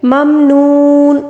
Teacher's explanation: واو مدہ کو 3 الف کے برابر کھینچ کر پڑھنا ہوگا، ٹھیک ہے۔ إِلَّا الَّذِينَ آمَنُوا وَعَمِلُوا الصَّالِحَاتِ فَلَهُمْ أَجْرٌ غَيْرُ مَمْنُونٍ۔